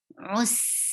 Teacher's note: For dhamma, circle your lips well, and then it is attached with seen, rus, and seen will get safi, seen will get rukawa, and safi is to make a snaky sound, and for rukawa you have to give a flow of sound.